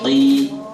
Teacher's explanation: Jadi seakan-akan qafnya bertasydid kayak ditekan qi gitu ya.